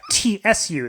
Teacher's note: they don't have a straight up TU sound in Japanese. Rather, they have TSU, that kind of sound.